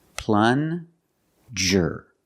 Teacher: use the regular n and the JJ sound like juice